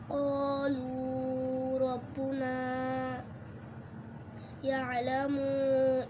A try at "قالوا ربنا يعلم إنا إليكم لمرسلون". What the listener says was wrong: يعلم مو টান নাই, يعلم ভাঙবে না, এখানে মিলাইতে হবে পড়াটাকে। দমটা বড় করে নিয়ে, নিঃশ্বাসটা বড় করে নিয়ে তারপর বলতে হবে একসাথে। يعلم এখানে টান নাই, টান দিতেছো কেন?